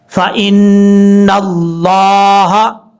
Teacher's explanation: جس نون کے اوپر شد ہو وہاں ایک الف کی مقدار غنہ کرنا لازمی ہے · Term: نون مشدد